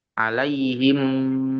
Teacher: mimnya itu didengungkan masuk ke huruf mim selanjutnya didengungkan di apa masukkan selama dua sampai harakat. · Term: idgham mimi